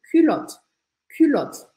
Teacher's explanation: tipo de kiloto então a palavra em geral é culot e você precisa marcar esse U bem biquinho